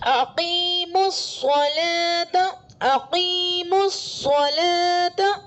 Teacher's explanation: شمسی حروف میں سے سواد آ رہا ہے تو الف لام کو نہیں پڑھیں گے، سواد کو میم سے ملا کر پڑھیں گے